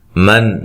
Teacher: نون ساکن کا اظہار ہے، غنہ نہیں کریں گے